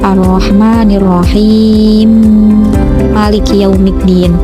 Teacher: Bacaan yang ketiga [musik] adalah bacaan dari Imam Assusi yang membaca lafaz arrahmanirrahim Maliki yaumiddin dengan [musik] bacaan idgham kabir yaitu membaca sukun huruf mim yang pertama kemudian diidgamkan pada huruf mim yang kedua